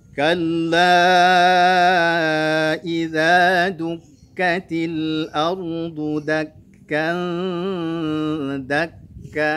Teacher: Perhatikan di kallanya dibaca 4 harakat karena majja ismun fasil. Dukkatil, dukka, berikan namroh kepada kafnya karena ada tasydidnya.